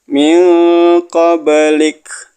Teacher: nun mati ketemu Kaf ikhfa dibaca samar-samar